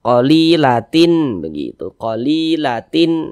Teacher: Karena dia izhar dibaca jelas, tak berdengung dia. Tanda baca tanwinnya kita baca jelas, qalilatin begitu, qalilatin, nah, jelas. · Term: izhar halqi